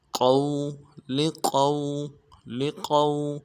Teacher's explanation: سے ادا کریں گے، قاف کو واو کے ساتھ ملانا ہے، واو لین بغیر کھینچے پڑیں گے، قاف کو موٹا کریں گے